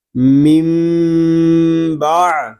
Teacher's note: نون ساکن میں اقلاب ہوگا کیونکہ نون ساکن کے بعد حرف با آ گیا ہے، اور اقلاب اس وقت ہم کریں گے جب ہم با کو پڑھیں گے.